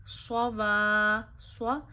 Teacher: صاد حروف مستعلیہ میں سے ہے اور صاد کو آپ ہمیشہ موٹا پڑھتے ہیں، اسی لیے صاد موٹا ادا کرنا ہے، تشدید کی وجہ سے صاد پہ زور ڈالنا ہے، جب نون کو صاد سے ملائیں گے اور جب دوسری مرتبہ صاد پڑھیں گے تو تھوڑا سا رک کے پڑھیں گے کہ پتہ چلے ہم نے صاد پہ تشدید پڑھی ہے۔